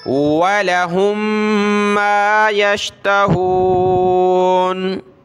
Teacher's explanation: وَلَهُمْ مَا يَشْتَهُونَ, واو زبر وا, لام زبر لا, ولا, ہا کو دوسری میم کے ساتھ ملایا, ناک میں آواز پیدا کی. وَلَهُمْ, لام کو کھینچنا نہیں, ولا نہیں کرنا